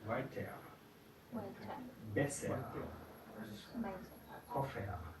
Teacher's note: En el final de una sílaba o una palabra suena más como una A.